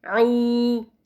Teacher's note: After that, there is letter ayn with dhamma, followed by empty waw, which makes it a waw mad. So sound of ayn will be stretched 2 counts.